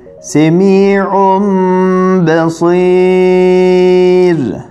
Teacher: Zaten sakin nun var içerisinde. B geldiği zaman bu sakin nun kısmını mime çevirerek okuyoruz. Şöyle ki mim ba'di, aynı zamanda bir elif miktarı tutarak gunneli okuyoruz. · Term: iklab